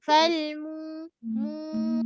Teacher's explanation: Mu 2 harkat mak asli. Mim makhraj dia bibir, muncungkan mu. Kemudian mu 1 harkat, masuk ke waw, waw yang mati sebelumnya pada depan, so mak asli.